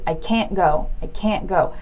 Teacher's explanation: the A is a lot shorter